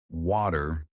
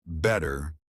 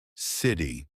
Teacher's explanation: Americans love to soften or remove the T sound. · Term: the T that disappears